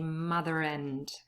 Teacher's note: for me there's an intrusive r between mother and. Now, if you are a rhotic speaker, for example, if you're from America or from Scotland, then you would say a r here anyway.